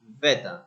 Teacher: And the other one is beta, is clear T when we say beta, the T sounds, and it's not rhotic ending because we say beta and the R doesn't sound at the end. That's why it is non-rhotic.